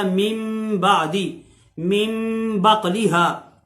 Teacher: تو من بعدی میں نون ساکن کے بعد با آ گیا ہے، تو یہ نون جو ہے میم سے بدل کے غنے کے ساتھ اس کو پڑھا جائے گا، تو بن جائے گا من بعدی، من بقلیہا۔ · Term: اقلاب